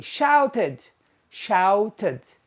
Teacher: We add an extra syllable. Shout is one syllable. Shouted is two syllables.